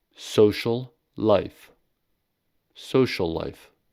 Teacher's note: in social life, la is pronounced for more time than if the sound occurred alone. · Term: gemination